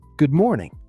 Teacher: The stress is on more. Not good morning. Not good morning equally.